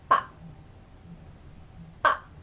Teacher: 밥, as you can hear in the beginning, the 삐업, 밥 has the B sound, but at the end it turns into a P sound